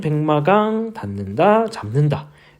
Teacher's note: 평파열음, 기역, 디귿, 비읍이 비음, 니음, 미음을 만나서 같은 조음 위치의 비음, 이응, 니음, 미음으로 바뀌는 현상을 비음화라고